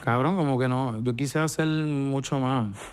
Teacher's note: Puerto Rican Spanish tends to pronounce S as H or not pronounce it completely.